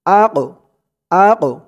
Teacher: وانظرنا لكان خيرا لهم وأقوم وأق হামজা দিয়ে এই কফকে ধরবে এই কফটা হচ্ছে কলকলার হরফ ধাক্কা দিয়ে পড়তে হবে